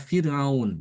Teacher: Kata Fir'aun, ro-nya dibaca tipis. Ya, karena dia didahului oleh huruf yang kasroh, kasroh asli.